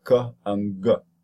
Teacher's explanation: so the tongue elevates goes up and back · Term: velar stops